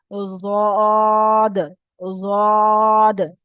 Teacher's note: জিভের পাশের ভাগটা উপরের দাঁতের মাড়ির সঙ্গে লাগান